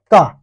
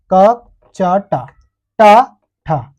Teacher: क बोलने पर स्वर तंत्रियों में कंपन नहीं हो पा रही है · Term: अघोष व्यंजन